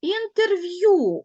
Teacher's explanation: звук е без наголосу Отже він матиме призвук ми його не чітко чуємо